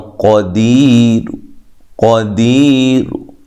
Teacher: رو مکمل اس کی حرکت نہیں پڑی بلکہ کچھ حصہ پڑا ہے